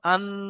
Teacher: নাকের মধ্যে আওয়াজকে ধরে রাখছি, এর নাম গুণনা